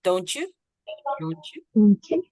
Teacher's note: we need to say the ch sound in the middle